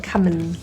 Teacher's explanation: Sometimes the ing gets reduced because it's quicker to produce an N.